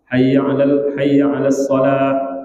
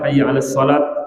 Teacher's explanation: maka sepatutnya mengucapkan ha pada as-salah.